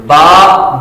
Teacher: बा दोनों होठों के तर हिस्से से ददा होता है